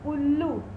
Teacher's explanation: उल्लू में हमने जल्दी से ऊ बोल दिया तो वह ह्रस्व स्वर हो गया